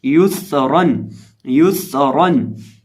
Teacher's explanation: या को पढ़ते वक्त होंठों को गोल करेंगे और रॉ को पुर करेंगे